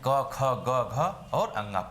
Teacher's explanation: तो इस तरीके से क, ग और अंगा 1 3 5, यह 1 3 5 में क्या हो जाता है, कभी कभी संदेह हो जाता है हर जगह, मतलब किसी भी वर्ण का, जैसे कंठ ले लीजिए, कंठ में 5 वर्ण आते हैं, क ख ग घ और अंगा। 5 में से 1 3 5 अल्प प्राण होता है और महाप्राण 2 और 4 होता है।